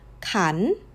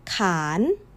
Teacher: Same rising shape, completely different words. And once again, the only thing that changed is the length.